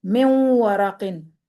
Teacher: ہونٹوں کو مکمل گول کرتے ہوئے نون کی ادھوری سی آواز کو ناک کی جڑ سے نکالتے ہوئے غنہ کی ادائیگی کی جاتی ہے